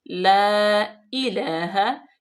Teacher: ये बिला गुन्ना हम करेंगे इसको, अल्लाह मद्दे मुनफसिल, ला इलाहा, क्योंकि नेक्स्ट कलमे में है हमजा, तो इसलिए हम इसको अढ़ाई अलिफ के बराबर लंबा भी करेंगे